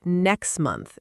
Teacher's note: If someone says next month, the T at the end of next often just disappears. · And it's not because the speaker is being lazy, it's because saying two hard consonant sounds back to back, the T and the M, is awkward, so the tongue naturally skips one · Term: Elision